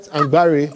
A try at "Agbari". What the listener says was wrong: You're not pronouncing the M.